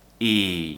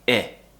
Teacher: and the mouth shape the two sounds are very very similar for the long vowel the tongue is higher as I said and for the short vowel the tongue is just below the top teeth so it's just near the sharp edge of the top teeth